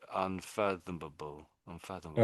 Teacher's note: when it's part of another word, we don't really say able on the end of it. It's not doesn't really come out as able.